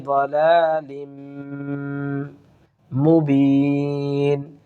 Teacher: দলালিম বলে আমরা গুন্না করা গুন্না করে পড়ার চেষ্টা করবো ইদগামে বাগনালি